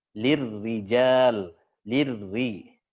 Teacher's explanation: getarannya sedikit aja disembunyikan. Tetap ada tapi disembunyikan.